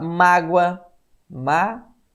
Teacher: A sílaba tônica é a penúltima, terminada em ditongo. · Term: paroxítona